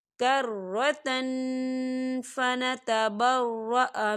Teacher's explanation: ہم تنوین کی آواز کو ناک میں چھپائیں گے۔ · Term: اکفا